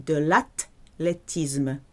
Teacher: There's no th sound. TH is a hard T.